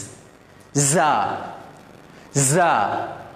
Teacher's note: ஒரு வண்டு கத்துற மாதிரியான ஒரு சவுண்ட் ஒன்று வருது. ஜா ஜா அப்படி வரணும்.